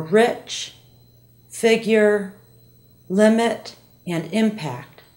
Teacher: the short eye sound is made by opening the mouth Med medium wide the teeth are slightly apart with more of the bottom than